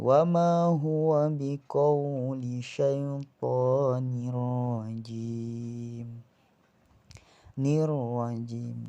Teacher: idgham memasukkan bila gunnah dengan tanpa dengung, jadi tidak berdengung. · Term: idgham bila gunnah